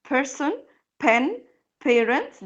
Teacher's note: دي اسمها voiceless دي ما بنعملش مجهود، ما بنعملش vibrations ولا اهتزازات في الأحبال الصوتية، بس المجهود كله أو الهوا كله بيطلع من our lips الشفايف، أوكي، وهي ما لهاش غير بس ما لهاش صوت تاني.